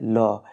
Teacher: इसमें मुख्य द्वार मध्य से बंद हो जाता है और हवा दोनों ओर से निकल जाती है जैसे ल ल को पार्श्विक व्यंजन कहा